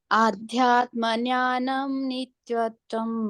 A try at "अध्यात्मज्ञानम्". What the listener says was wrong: ज्ञानम नहीं है, ज्ञान है। अध्यात्म ज्ञानम, ज्ञान।